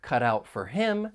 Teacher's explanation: the final T in Cut you're going to hear me pronounce it as a flap T it's going to sound more like a soft D